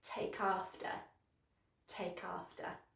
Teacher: Okay, now first of all, one of the lovely things about phrasal verbs is the connected speech. So take ends in a consonant sound and after begins with a vowel sound, so you're going to link those together